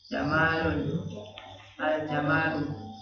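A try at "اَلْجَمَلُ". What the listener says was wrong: Jamalun, al jamalu gitu. Enggak dipanjangin, Pak ya.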